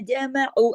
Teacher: قد، قد، قاف موٹا، دال پہ کلکلا ہوگا، کتب جدن کا حرف ہے نا، اور دیکھیں کہ اس کے اندر ہے جزم کے ساتھ. قد جمعوا، جمعوا، سب باریک لیٹر ہیں، عین کو حلق سے پڑھنا ہے. جمعوا، عین 2 حرکات پڑھا جائے گا کیونکہ واو مدہ کے ساتھ ہے.